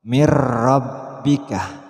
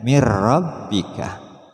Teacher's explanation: ada nun mati bertemu ro masukkan suara nun mati pada ro